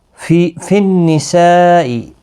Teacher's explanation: نون مشدد پر غنہ ہوگا اور یہاں پر بڑی مد ہے۔ وقف کی صورت میں بھی 5 الف کی مقدار کے برابر کھینچ کر وقف کریں گے۔